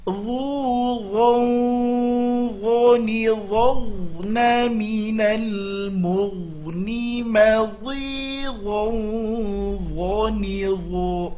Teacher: Harus keluar lidahnya. Kalau tidak bunyinya menjadi zo, zi, zu. Itu huruf zal yang ditebalkan. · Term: huruf dho